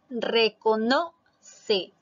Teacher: la mayor fuerza de voz está en la sílaba no que es la penúltima por lo tanto también es una palabra grave los palabras monosílabas